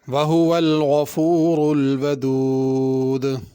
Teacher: الودود کی دال پہ قلقلہ ہوگا